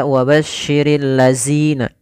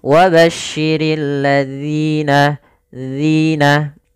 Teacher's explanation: ketika melafalkan huruf dzal ini jangan sampai terbaca dengan huruf zai